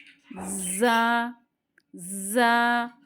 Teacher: सीटी वाले हरूफ 3 है, उसमें से ये एक है, इसमें थोड़ी सी बजिंग साउंड आनी चाहिए